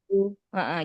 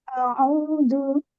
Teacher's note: Hamzah ke Ain ini zaman atau temponya jangan terlalu lama